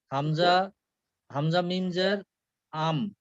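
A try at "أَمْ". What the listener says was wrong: না, না, জের, জের না তো, জবর। হামজার উপরে কি আছে? জবর না?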